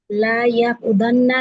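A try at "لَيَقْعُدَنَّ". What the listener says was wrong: লা টান হবে না। লা যদি আপনি টান দেন ওটা তখন না ফিল লা হয়ে যাবে, লা ইয়াফআলু ওইটা। লা ইয়াকউদান্না লা ইয়াকউদান্নি এরকম।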